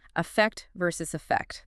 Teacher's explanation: And the pronunciation is super close too, right? Both stressed on the second syllable.